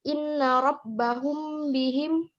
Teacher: apabila ada mim mati bertemu dengan huruf ba maka cara membacanya dibaca dengan sedikit mendengung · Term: Ikhfa Syafawi